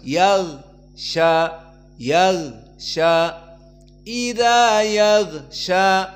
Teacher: Meskipun tidak ada udara yang keluar Namun gho dipanjangkan karena ada suara di saat disukunkan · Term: rakhawah